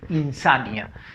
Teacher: Siguiente palabra, insania. La fuerza de voz está en la sa, no es insanía, por si acaso, es insania.